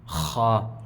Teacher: خا، یہ حلق کے سب سے اوپر والے حصے سے ادا ہوتا ہے